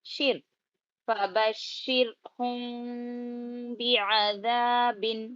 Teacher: را کو کلیئر اور باریک کرنا